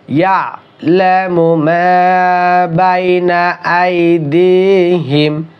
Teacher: ইয়ালামু না কিন্তু ইয়া, আইনটা শক্ত করে।